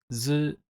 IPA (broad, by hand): zɯ